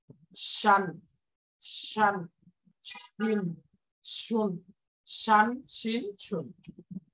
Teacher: জিমের জায়গা থেকেই জিব্বার মাঝখানটা তালুতে লাগবে, একটা আমাদের বাংলা তালব্যস মূর্ধন্যসর মতো উচ্চারণ হবে, শান শান শিন শুন, শান শিন শুন।